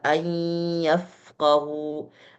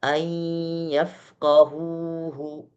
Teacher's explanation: Ada gunnah yang berasal dari nun sukun, ya, yang masih tersisa sehingga tidak masuk total ke dalam huruf ya. Jadi ayyafqahuhu gitu. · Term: idgham naqis